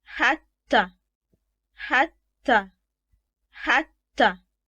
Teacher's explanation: the alphabet Taa is denti-alveolar. And this means that it is produced by striking the two front teeth and the gum with the tip of the tongue. It's a voiceless sound.